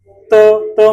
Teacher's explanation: त में जीभ हमारी दांतों में टच करेगी।